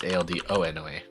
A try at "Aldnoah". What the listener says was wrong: It's just Aldnoah. There's no extra O. Yeah, it's just Aldnoa.